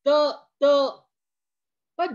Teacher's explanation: जिभेचं टोक बरोबर वरच्या दाताच्या मागील बाजूस चाललं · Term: दंत्य वर्ण